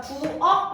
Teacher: 키읔은 발음이 되지 않기 때문에 어떻게? 가장 비슷한 기역으로 발음이 된다라는 거예요